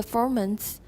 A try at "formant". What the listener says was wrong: 不用那么重 because we've just said the word We've said both, so we don't need to stress them too much.